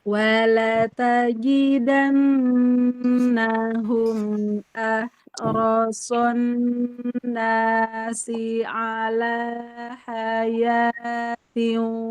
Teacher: bukan di hidung ya, bukan bukan dipanjangkan di hidung, tapi di rongga mulut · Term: mad